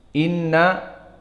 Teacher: maka harus ghunnah dan keluar dari hidung